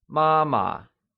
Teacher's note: it is pronounced using the high level tone